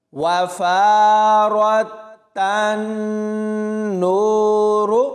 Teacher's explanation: اس کے بعد تا کو نون کے ساتھ ملانا ہے تو یہاں پر غنہ کر کے پڑھنا ہے، نون کو آگے واو کے ساتھ ملائیں گے تو واو مدہ ہوگی، اور آخر میں را کو پر یعنی موٹا پڑھنا ہے۔ واو زبر وا، فا الف زبر فا، را تا زبر رات، وفارات، تا نون زبر تن، نون واو پیش نو، را پیش رو، تن نور، وفارات تن نور۔